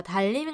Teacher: 리을과 니은이 만났는데 앞 자음 때문에 뒤에 니은이 리을로 바뀌었어요. 그죠?